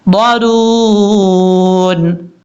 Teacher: میم کو جب ہا سے ملائیں گے تو ہا کو کلیئر کرنا ہے، بریک پڑھنا ہے، بھاری ساؤنڈ کے ساتھ نہیں پڑھنا، محضرون نہیں پڑھنا، محضرون۔